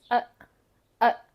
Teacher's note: however we did not do much with it because the vowel the actual vowel sound is uh uh it's like a short u but cut very short